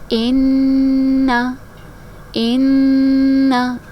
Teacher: اب دیکھیں یہاں پر نون پھر سے مشدد آ رہا ہے، یہاں پر بھی نون مشدد تھا تو ہم نے اس کو غنّے کے ساتھ پڑھا، یہاں پر بھی نون مشدد ہے تو یہاں پر بھی ہم غنّہ کے ساتھ اس کو ادا کریں گے، آواز کو ناک میں روک کے رکھیں گے